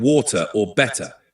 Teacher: That softer T sound in American English is called a flap T or tap T. It makes the T sound more like a quick D, especially between vowels